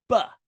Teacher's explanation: It's a b. That means it's a bilabial. It's a plosive. Plosive. You can only make the sound one time.